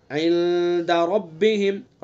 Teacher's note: عند اخفا کریں گے، ایک الف کے برابر ناک میں چھپا کر کے ادا کریں گے اخفا کو. عند ربہم.